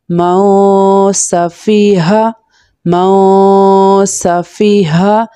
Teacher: موسا، فا کسرہ فی، موسفی، ہا فتحہ ہا، موسفیہا، موسفیہا۔ یہاں پر ہا موٹی ہا ہے یعنی جو حلق کے لوور پارٹ سے پروناؤنس ہوتی ہے، موسفیہا۔ میم نون فتحہ مو، اگین میں اس لیے مو پڑھا بیکیز نون ساکن کے بعد نیکسٹ لیٹر شین لیٹر ہے جو کہ اخفا لیٹر ہے۔